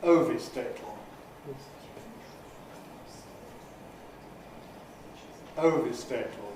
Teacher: The vowels are strong, weak, strong, weak.